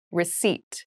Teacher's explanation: there is a p in the spelling of this word but we do not pronounce it